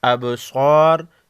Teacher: ابصار با ساکن کو ہلا کر پڑھیں گے، صاد کو موٹا پڑھیں گے